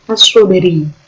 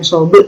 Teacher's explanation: Kalau qalqalah sugro ini di tengah-tengah kalimat as-sobri, bukan sobri, bukan b-nya tuh ada pantulannya. Sobri, bukan sobe itu nggak sampai, tapi sobri.